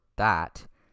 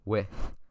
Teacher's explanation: A digraph is just two letters combined to represent one phoneme, or sound. There is the voiced dental fricative, as in the word that, and the voiceless dental fricative, as in the word with.